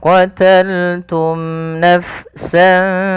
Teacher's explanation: ia harus jelas di dalam melafalkan mimnya, tidak boleh ada penahanan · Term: izhar syafawi